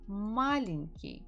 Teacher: the stress falls on the first syllable